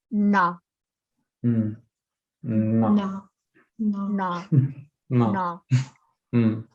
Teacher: you push your tongue back, it touches your palate, and you go na. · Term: retroflex N